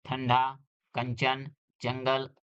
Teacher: अनुस्वार के उच्चारण में वायु नाक से निकलती है और उच्चारण झटके के साथ होता है, जैसे ठंडा, कंचन, जंगल आदि।